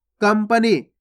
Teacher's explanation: कंपनी में आधा माँ का उच्चारण हो रहा है, इस प्रकार से हो रहा है, देखो का, आधा माँ, पा और ना में बड़ी की मात्रा नी, इस प्रकार से आधा माँ का उच्चारण हो रहा है यहाँ पे कंपनी।